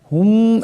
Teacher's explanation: মিম সাকিনের পর মিম আসছে ইদগাম হয়ে যাবে ইদগামের এক পরিমাণ গুন্না হবে